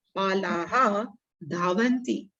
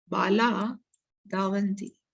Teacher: When Visarga preceded by A and followed by soft consonant or a vowel, then Visarga is dropped. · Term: Visarga simply dropped